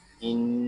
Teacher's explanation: یہاں نون مشدد ہے، اس کو غننے کے ساتھ پڑھیں گے۔